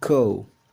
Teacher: The vowels of cow and goal both begin at a given place and glide towards another one. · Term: diphthong